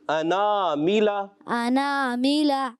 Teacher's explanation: حمزہ کریں، عین کی آواز نہیں آئے